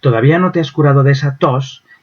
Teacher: en los enunciados interrogativos el tonema, es decir, la dirección de la entonación del enunciado es ascendente, y eso obliga a que sea más tenso ese fonema, se pronuncie de forma más tensa.